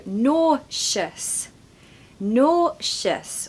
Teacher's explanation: we must stress the first syllable